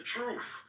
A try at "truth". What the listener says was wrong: it's pronounced truth not truth there's no t r u f it's not truffles